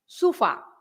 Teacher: because you have the accent on the A, so you have to stress the fa.